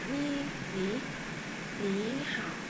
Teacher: cái chữ phía trước nó sẽ biến thành thanh hai